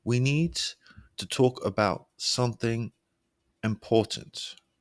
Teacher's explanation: Your voice lowers slightly to show the seriousness. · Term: lower pitch